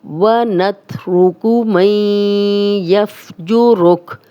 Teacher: را پہ پیش ہے تو را موٹی پڑی جائے گی